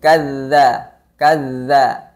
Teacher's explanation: Dzal bertasydid itu harus dialirkan suaranya. Namun nafasnya tidak mengalir.